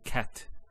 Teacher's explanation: So the T doesn't have any vowel associated with it. It's actually just a stop on the T. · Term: sukun, sukoon